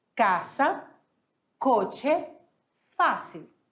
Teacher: palavras em que a sílaba tônica é a penúltima, ou seja, a penúltima é a sílaba mais forte